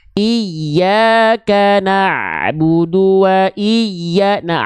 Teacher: Makhraj huruf ain itu dilafalkan dari wastul halqi.